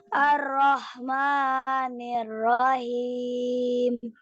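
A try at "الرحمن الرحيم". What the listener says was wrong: Nah, itu tipisin lagi yang ujungnya. Ar-Rahmanir-Rahim. Oh, itu kebesaran. Jangan him, tapi nirrahim.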